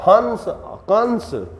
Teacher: अनुस्वार का उच्चारण स्थान कहां से होता है नाक से